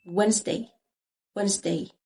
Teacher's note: هنا الدي silent مش بننطقها